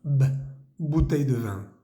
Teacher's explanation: la palabra comienza con b grande se pronuncia con los dos labios